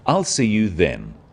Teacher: the stress is on the word then to confirm that the time is definite